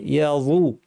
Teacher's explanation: জিব্বার শীর্ষটা দাঁতের শীর্ষে লাগিয়ে কিন্তু পেছন দিয়ে আওয়াজটা ঠেলে আওয়াজটাকে ভারী করতে হবে।